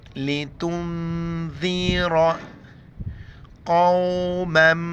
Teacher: دونوں میم ایک دوسرے کے ساتھ ملیں گے، اس کو ادغام کہتے ہیں